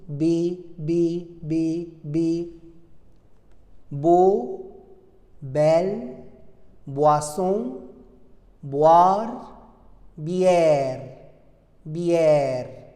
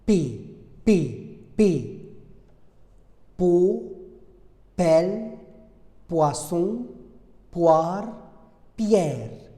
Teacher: Mais pour le P, P, c'est une consonne occlusive, c'est-à-dire que l'air va rencontrer un obstacle total.